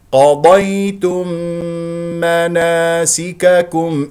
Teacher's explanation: ميم قضيتم جاء بعدها ميم مناسككم اذا ادغام بغنه مقدار الحركتين